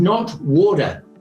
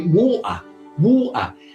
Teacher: A Cockney from London will say water, water. It's a guttural stop where you actually stop the supply of air and it stops there.